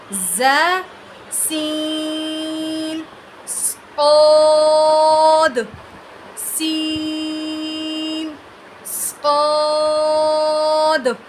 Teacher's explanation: زبان کے سامنے والا کنارہ نیچے کے 2 دانتوں کی جڑ سے لگے تو اس سے 3 حرف ز، سین، صاد ادا ہوتے ہیں